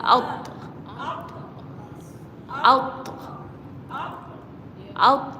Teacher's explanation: huruf ta ni bersifat syidah maksudnya tahan dulu lepas tu lepas